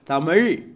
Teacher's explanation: நாவின் நுனி மேல் நோக்கி வளைந்து வருடுவதால் ழகரம் பிறக்கிறது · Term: சிறப்பு ழகரம்